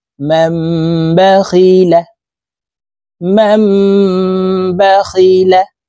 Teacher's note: পড়তে হবে কারণ নুন সাকিন অথবা তানভীনের পরে হরফ বা আসলে এই নুন সাকিনকে এই ছোট্ট মিম দ্বারা পরিবর্তন করিয়া গুন্নার সহিত পড়িতে হয়